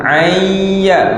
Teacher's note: nun mati bertemu dengan ya, dengung ayya, masukkan nun dalam ya